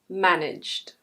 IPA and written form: ˈmænɪdʒd (managed)